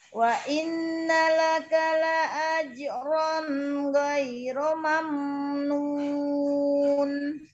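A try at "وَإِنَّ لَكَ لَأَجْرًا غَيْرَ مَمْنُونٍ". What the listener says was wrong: Coba disempurnakan lagi gunahnya. Jimnya jangan ada jangan ada nya. La ajro.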